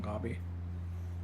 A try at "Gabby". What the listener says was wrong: in Spanish, you pronounce the A as an A. You don't pronounce it as an O.